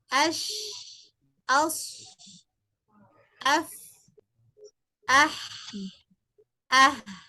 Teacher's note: Zaman pada huruf rokhawah terasa panjang.